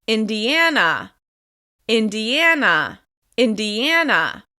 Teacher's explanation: As you can hear this is stressed on the third syllable